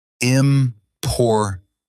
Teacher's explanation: Word stress means one part of a word is stronger. For example, in important, the middle part is stronger.